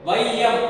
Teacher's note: ஐ என்கின்ற எழுத்து ஒரு சொல்லிற்கு முதலில் வரும் பொழுது, வையம் அப்படின்னு வரும் பொழுது 1/2 மாத்திரை அளவாக ஒலிக்கிறது, அரை மாத்திரை அளவு குறைந்து. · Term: ஐகார குறுக்கம்